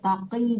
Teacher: Kalau enggak enggak boleh dipanjangkan. Innal muttaqi itu qofnya ditebalkan ya, Bu. Taqi. Jangan taki ya.